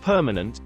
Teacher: As in permanent, we say the middle syllable ma with a very little stress on it. Thus, the sound of the A in ma is a weak sound called a schwa sound.